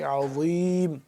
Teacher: عین دوبارہ حلق کے درمیانی حصے سے اور کھینچاؤ پیدا کر کے